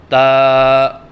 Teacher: زبان کی نوک جب اوپر والے سامنے کے دانتوں کی جڑ سے لگے تو اس سے تا ادا ہوتا ہے۔ جیسے کہ آپ کو اس نقشے میں نظر آ رہا ہے کہ زبان کی نوک ثنایا علیا کی جڑ سے لگی ہوئی ہے۔